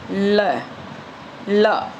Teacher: क्या डेफिनसी दे रखी है वह ध्वनि जिसका उच्चारण करते समय जीभ तालू से चिपक जाती है तथा निकलने वाली प्राण वायु जीभ के दोनों और से गालों को स्पर्श करते हुए बाहर निकलती है है ना उसको ल बोलते हैं ल और झटके के साथ